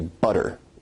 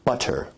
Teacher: in received pronunciation where you say butter, that involves a full T stop